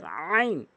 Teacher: এটি হচ্ছে হলকের মাঝখান থেকে উচ্চারণ করতে হয় চাপ দিয়ে